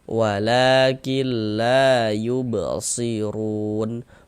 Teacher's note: Sebelum alif, sebelah sininya nih, ini alif nih, sebelah sininya, sebelah kanannya ada huruf yang memiliki ini tanda baca fathah, maka huruf tersebut dibaca panjang, sehingga la dibaca panjang mad tabi'i panjang 2 harokat.